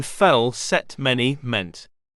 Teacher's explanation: The front of the tongue is used in the production of this vowel, making it a front vowel. It is also a close middle vowel, as the position of the tongue and jaw is slightly raised.